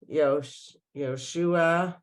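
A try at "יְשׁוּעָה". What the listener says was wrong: Again, no o. Yeshua.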